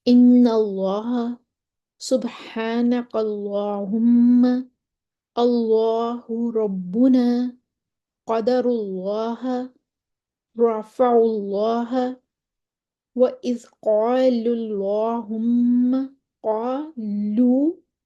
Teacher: असल में लफ्ज़ अल्लाह या अल्लाहुम्मा से पहले ज़बर या पेश हो तो उनको मोटा पढ़ा जाएगा। यानी कि अल्लाह के नाम से पहले ज़बर या पेश हो तो हम उसको मोटा पढ़ते हैं। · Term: लाम की तफ़हीम